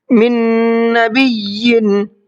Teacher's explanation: नून का नून में इदगाम कर देंगे और मिक्स करके गुन्ना करके पढ़ेंगे।